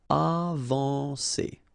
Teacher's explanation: when you combine A and N, you get the nasal en